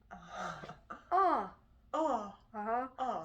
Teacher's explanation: So it's very tall, not wide. And it looks like a yawn. That's our most open vowel. And in the back, it might be nice if you lifted your soft palate a little bit like you're yawning.